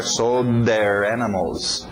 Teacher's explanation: O D entrando no TH de there